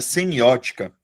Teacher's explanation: Sílaba tônica da palavra semiótica é a antepenúltima.